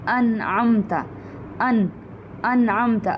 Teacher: نون کو ہم صرف ظاہر کر دیں گے, ہم وہاں پر غنہ نہیں کریں گے, ہم نون کو چھپائیں گے نہیں, مدغم نہیں کریں گے, گم نہیں کریں گے, ہم نون کو صرف ہم وہاں پر ظاہر کریں گے, اس کا اظہار کر دیں گے. · اب یہاں پہ میں انعمتا اس طرح کر کے نہیں پڑھ رہی یا نون کو گم نہیں کر رہی, تو نون یہاں پر ظاہر ہو رہا ہے, انعمتا. اب سننے والے کو صاف پتہ چل رہا ہے یہاں پر نون پروناؤنس ہوا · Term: اظہار حلقی